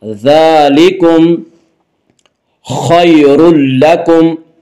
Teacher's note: خا کو پر پڑھیں گے، خا حروف مستعلیہ میں سے ہے